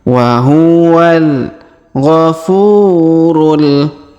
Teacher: Huruf fu kita panjangkan 2 harokat karena terdapat waw sukun